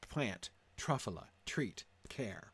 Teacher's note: it shifts to a dactylic sound with the beat at the front